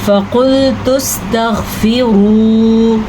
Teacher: فقلت استغفروا، موٹا قاف، تا کو باریک پڑھنا ہے کیونکہ یہ طوا نہیں ہے